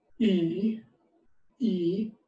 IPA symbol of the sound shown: iː